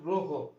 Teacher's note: এই ময়ের সাথে যে অ উচ্চারিত হচ্ছে সেটা হচ্ছে ও এর মতো